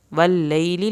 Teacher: لیلی لام کی زیر لمبی نہیں کرنی